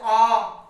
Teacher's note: विवृत स्वर जिनके उच्चारण में मुख द्वार पूरा खुला हुआ होता है